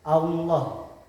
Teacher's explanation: Contohnya Allah, yaitu lam jalalah didahului oleh harokat fathah. Cara membacanya yaitu tebal, posisi bibir agak mencorong ke depan, Allah. Terus yang kedua yaitu tarkik, yaitu ketika lam jalalah didahului oleh harokat kasroh.